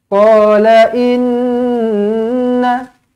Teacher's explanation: Nun sabdu wajibul gunnah mesti kena dengung 2 harokat. Mesti kena dengungkan 2 harokat.